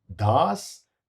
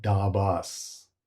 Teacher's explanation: Notice the tongue moves from the teeth for Das to the roof for Dabas.